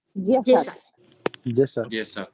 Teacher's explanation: So the consonant gets modified and it is pronounced in Slovak as soft, palatalized.